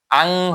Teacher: আং হয়ে যায়, নুনের বদলে গোপন হয়ে আং হয়ে যায়। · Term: ইখফা